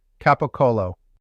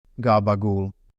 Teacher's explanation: The hard consonants soften. They go from sharp to round. Specialists call it voicing. C becomes G. · The first C rolls over into a G. The second C rolls over into a G. The last sound falls away because it always falls away, and we will come back to that.